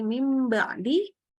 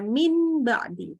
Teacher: Jadi ketika nun ketemu ba, nunnya langsung berubah suara menjadi mim. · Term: iqlab